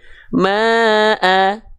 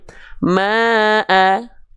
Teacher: Dibaca dengan kadar panjang 2 harokat. Maka secara dasar ma di sini itu mad tabi'i, bacanya 2 harokat.